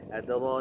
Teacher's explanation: Adra bukan adra. Adra dibaca tebal roknya karena berharokat fathah